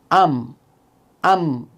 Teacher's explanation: মিম, দুই ঠোঁটের শুকনা জায়গা হতে উচ্চারিত হয়